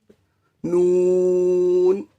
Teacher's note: زبان کا کنارہ اس کے برابر اوپر 6 دانتوں کے جڑ سے نون ادا ہوتا ہے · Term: نون کا مخرج